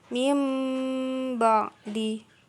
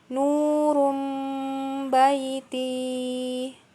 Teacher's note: nun sukun atau tanwin bertemu dengan huruf ba berubah menjadi mim atau yang disebut dengan iqlab.